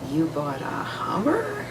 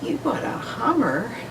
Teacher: In English, we use pitch in much more sort of subtle ways to convey things like if you say, you bought a Hummer, or you bought a Hummer, it's the pitch of your voice that's conveying either approval or disapproval